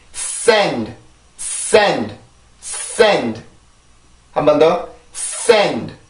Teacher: 지금 요 모음 앞에 강세가 있는 모음 앞에 자음이 왔을 경우에는 내가 여기 있는 자음의 힘으로 강세를 만들어 줄 수가 있는 거예요. 그래서 S 발음 같은 경우는 치조 마찰음이라고 해요.